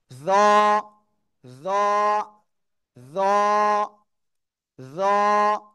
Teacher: মোটা আওয়াজে আমরা একালিপ টেনে পড়বো।